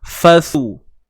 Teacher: huruf sa ni jangan lupa keluarkan sikit hujung lidah kita di antara dua gigi kapak kita ni, atas dan bawah